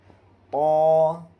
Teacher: سرا زبان اوپر کے سامنے والے دانتوں کی جڑ سے طا ادا ہوتا ہے۔ یہ بھی حروف مستعلیہ میں سے ہے، یعنی ہر حال میں یہ بھی حرف پر ہوگا۔